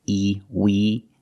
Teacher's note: With wing, we use the long E sound like green beans. The sound is more closed, E, we. And the NG makes the sound where the back of the tongue is touching the back of the roof of the mouth, like this.